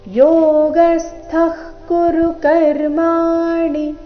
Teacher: ಯೋಗ ಸ್ಥ ಗ ಮೇಲೆ ಆಘಾತ